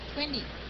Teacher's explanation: người Mỹ họ thường đọc chữ T thành chữ D